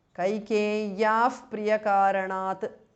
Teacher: Kaikeyaha, Visarga changes to Upadhmaniya.